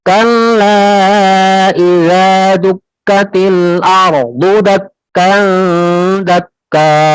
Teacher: kalau kaf tipis karena dia tidak punya sifat isti'la